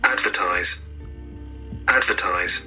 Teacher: advertise is read on the first syllable